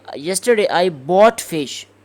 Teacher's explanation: if you want to say that I bought fish, you want to stress bought, so you will say yesterday I bought fish, and it means that you didn't sell it, like this. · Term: contrastive stress